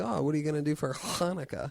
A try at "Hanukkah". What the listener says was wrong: If you said it like that, no, you accentuate it too much. You're calling too much attention to your pronunciation. Hey, what are you guys going to do for Hanukkah? I even accentuated a little bit there. What are you guys going to do for Hanukkah?